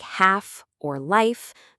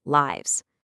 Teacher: Nouns that totally change their form to become plural. For words that end with that soft f sound like half or life, the plural form often gets a harder v sound. And the spelling actually follows the sound.